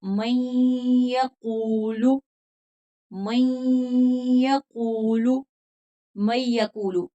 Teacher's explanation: نون کی آواز کو پوشیدہ نہیں کرنا، واضح کرنا ہے